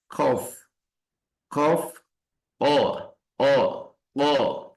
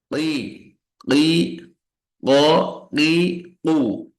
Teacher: di aqsal lisan itu datang huruf qof yang membentur ke langit-langit atas